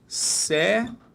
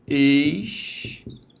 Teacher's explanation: Repare que todas elas têm como a sílaba tônica a penúltima. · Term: paroxítonas